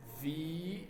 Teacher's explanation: But F with the sound. But if you take the F sound and you add the voicing, becomes a V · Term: V sound